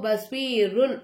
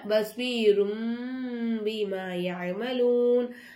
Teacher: அப்ப நம்ம என்ன செய்யணும், இக்லாபுடைய எழுத்து வந்துச்சுனாக்கா தன்வீனையும் நுனே சாக்கினையும் நம்ம என்னமா செய்யணும், மீமா மாத்தி உச்சரிக்கணும்